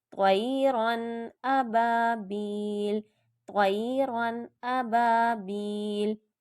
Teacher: इसको मैं तोयरन कह के नाक में ले जाके गुन्ना नहीं करूँगी, बल्कि ज़ाहिर करके पढ़ूंगी, यानी इजहार हो रहा है यहाँ पे।